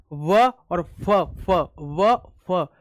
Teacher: व फ, दांत मैंने होठ पे ले लिए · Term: दंतोष्ठ